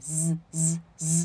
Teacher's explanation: 送气，就变成什么▁b▁b▁b，▁太不送气了，这猫完全不懂啊▁，b▁b▁b▁p▁p▁p，▁是吧？差别很明显啊。那么我们放到单词里面去试一下，第一个▁spy▁spy▁不送气，好，第二个。Space,▁space,▁OK，▁不要念成▁space▁啊，念▁space，▁它就开始摇了。最后一个后面没有元音，那怎么样▁？Grasp,▁grasp，▁哎，你摇呀▁，grasp，▁哎，因为是有一股气流出来的，对吧▁？Grasp，▁啊，大家去试一下。这个就是今天的三个组合，跟▁s▁有关的▁，skr,▁spr,▁stir，▁OK，▁大家记住他们的规则，好吗？然后呢，我们来到了这个▁z。这个▁z▁呢也是一个摩擦音，大家应该想必已经感受到了，但是它跟▁s▁有什么区别啊？你们摸摸看声带，这里前面是▁s，▁现在是▁z，▁这里在震，对吧？这里麻麻的，哎， 所以它是浊辅音，懂吗？浊辅音声带是有震动的啊